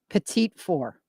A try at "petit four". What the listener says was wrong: Petit four. Not the second T, but petit four.